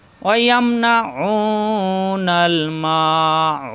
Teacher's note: আইন কণ্ঠনালীতে শব্দ দিয়ে উ 1 আলিফ টান